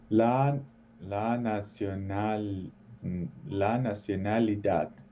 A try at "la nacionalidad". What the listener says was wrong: Muy bien, muy bien.